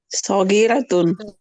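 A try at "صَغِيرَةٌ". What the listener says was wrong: Oke, sagiratun. Ini kayaknya Bugis asli nih Ibu ya, masih pakai ra. Pakai ro Ibu. Orang-orang Bugis itu pakai ra, sama kita sama orang Padang. Orang Padang juga bilang ra. Orang Mesir juga bilang ra.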